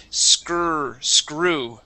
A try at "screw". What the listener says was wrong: Okay, force your tongue down. You're saying screw, okay, and letting your tongue hit the top of your mouth. Push it down, just like when you said the word red and counter. Okay, your tongue is pushed down. You want to do the same thing right after a C. Screw.